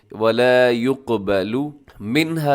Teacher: منها، يقبل میں قاف موٹا کیجیے گا اور اس کے علاوہ لام کو مجہول نہ پڑھیے گا، پیش والے حرف کو اکثر مجہول پڑھ دیا جاتا ہے